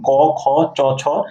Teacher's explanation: এই ধ্বনিগুলো উচ্চারণের সময় এই ধ্বনিদ্বারের কম্পন কম হয় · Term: অঘোষ